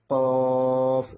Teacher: জিহ্বার গোড়াটা উপরে তালুর সঙ্গে টক্কর দিবে